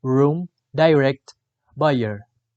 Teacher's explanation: The description of r is voiced alveolar approximant.